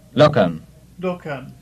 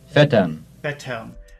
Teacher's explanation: the syllable with the post-vocalic R is, in every case, slightly longer than the syllable without it.